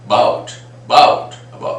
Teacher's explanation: Your mouth opens, a remains suppressed, and we stress on b, that is about, about, about, and sometimes even that is not heard even. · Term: weak a